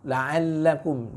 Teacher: dia tetap punya bainiyah ya, atau tawasud di huruf lam ya. Jadi jangan terlalu terburu-buru, jangan terlalu disiddah, terlalu seperti tamtid ya, berlebihan gitu ya.